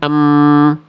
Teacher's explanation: Kalau huruf mim ketika bibir bersentuhan em suaranya masuk hidung. Ketika kita tutup kita buktikan em suaranya hilang.